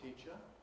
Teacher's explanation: It’s also followed by an unstressed vowel, the /ə/ at the end of /ˈtiːʧə/. So it gets ‘rhythmic clipped’.